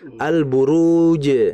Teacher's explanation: kalau bertemu lam mati setelahnya ba, maka dalam pengucapan lamnya harus dibaca jelas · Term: idhar